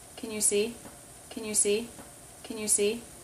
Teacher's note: Helping verbs will usually be unstressed, and can likes to reduce when it's unstressed to kn, K sound, schwa, N. Kn.